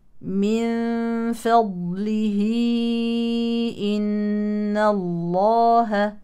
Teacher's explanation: مد صله كبرى يلحق بالمد المنفصل ويمد بنفس مقدار المنفصل حركتين بشروط من طريق طيبه النشر او اربع او خمس حركات